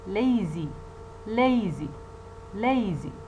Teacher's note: now i see the example lazy lazy lazy you see the the first syllable that contains the diphthong a is more prominent it is stressed